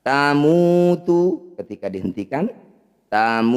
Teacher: Mad tabi'i bertemu huruf hidup dihentikan disebut bacaan mad arid bisukun. Mu panjangkan 6 harokat, huruf terakhir sukunkan.